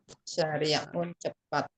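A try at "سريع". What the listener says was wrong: Ya, kalau jalan besar pakai shin, syari'un. Kalau ini sari', ya, sari'un.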